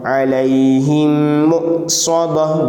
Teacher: हमज़ा साकिना में झटका होगा